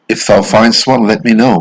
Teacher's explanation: always trochaic trochaic remember stressed unstressed the opposite of iambic